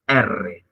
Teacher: vibrante múltiple la lengua vibra muchas veces cuando decimos r